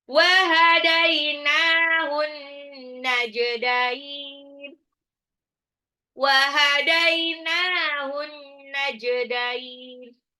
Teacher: Hadainahu, dainya ini adalah sifat lin, nunnya mat tabi'i, an-najdain, alif lam samsyah, alif lamnya nggak dibaca. Ya, karena langsung lebur ke nun tasdid di gunnah. Nun tasdid itu bacanya gunnah.